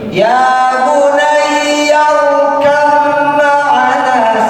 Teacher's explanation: Ba-nya hilang, langsung masuk ke huruf mim. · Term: idgham mutaqaribaini